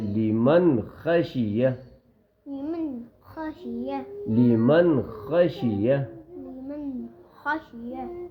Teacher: ذالک، ہاں، لیمن، لیمن، اس نون پہ بھی اظہار ہوگا بیٹا، نون کو فوراً پڑھیں گے، ناک میں ایک الف کے برابر ایک سیکنڈ کے برابر نہیں چھپائیں گے